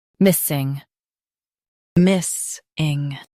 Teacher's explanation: Emphasize miss and keep ing soft.